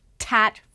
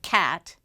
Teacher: Now, children with phonologic impairment may make more substitution errors, but it's important to note that when they say tat for cat, they're substituting the T for the K sound, the T for the K sound, but the movement for that T is correct.